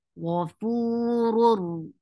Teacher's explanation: idgham without gunna. There is no gunna, so you are not keeping sound in your nose.